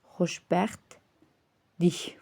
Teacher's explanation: Burada t samiti tələffüz zaman düşəcək. Xoşbəxt, dik formasına tələffüz ediləcəkdir.